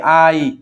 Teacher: প্রথমটা পুরোপুরি উচ্চারিত হয়েছে দ্বিতীয়টা অর্ধেক উচ্চারিত হয়েছে। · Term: দ্বিসরধ্বনি